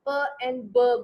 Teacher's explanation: ऐसी साउंड जो अपर एंड lower lip के मिलने से प्रोड्यूस होती है उसको हम बायलेबियल्स कहते हैं। और ऐसी साउंड्स को हम क्या कहते हैं, प्लॉसिव्स कहते हैं, क्योंकि वो फटने से प्रोड्यूस होती है, क्योंकि मुंह बंद हो जाता है और जब हवा जोर दे के निकलती है तो फट के निकलती है और हम प एंड ब बोलते हैं।